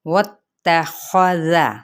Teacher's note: واتخذ، اب یہاں پہ واو کی زبر کو تا کے ساتھ ملائیں گے، تا کی حرکت کو لمبا نہیں کریں گے، خا حرف مستعلیہ میں سے ہے، اس کو پر پڑھا جائے گا